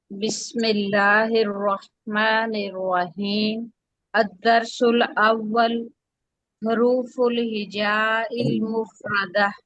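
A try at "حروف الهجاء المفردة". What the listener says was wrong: ہا کے اوپر ضمہ ہے، حروف الہجاء المفردہ،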